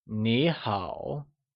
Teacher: Informally, Hello translates to Nǐ hǎo said in the falling rising tone